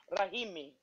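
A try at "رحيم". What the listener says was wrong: Correct.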